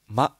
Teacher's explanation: 那么现在呢，我要来讲的是宁波话的韵母的第三部分。那么这次会来讲一下入声韵母。那么宁波话保留这个入声的韵尾，那宁波话的入声韵尾是发音短促而带有喉塞音韵的一个韵尾。那么在发音结束的时候，喉咙会紧一下。这个▁I▁就是国境标这个标志，就是问号去掉一点的，类似于这个标志。类似发音就是像阿拉伯语中的这个▁Hamza。它这个发音就是非常类似于这个，宁波话入声，那么首先来看一下啊，就呀哇，这几个音就是这三个啊呀哇这三个韵母的这个就是入声。 那么它发音就是比较短促，发音结束时需要收紧一下喉咙